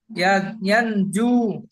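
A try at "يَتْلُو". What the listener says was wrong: তাহলে ইয়াতলু, ইয়াতলু, আপনি বলছেন ইয়ানজু। আমি বলে দিচ্ছি তো, ইয়াতলু, ইয়াত, ইয়া তা জাবার ইয়াত, লাম অপেশ লু, ইয়াতলু।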